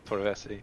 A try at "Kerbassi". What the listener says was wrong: No, Kerbassi with a K.